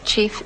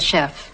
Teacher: second one Chef after the 16th century because we know that French underwent a sound shift in the meantime from the CH sound to the sh sound in that environment